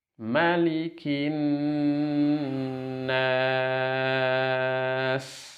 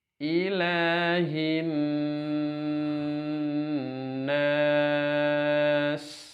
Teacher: Nun bertasydidnya adalah gunnah mutawalah, gunnah kamilah, gunnah musyaddadah ya, yang harus dipanjangkan.